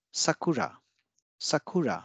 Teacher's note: so here we have ooh sound after this unvoiced consonant but the following consonant ra is not an unvoiced one it is a voiced consonant